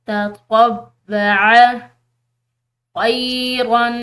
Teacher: آ رہی ہے واو جو کہ مشدد ہے، تو اس کو پریشر سے پڑھیں گے